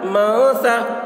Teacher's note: نون ساکن کے بعد حروف اخفا میں سے ثا آ رہا ہے، اس لیے نون کی آواز کو ناک میں چھپا کر پڑھیں گے، اس کو اخفا کہتے ہیں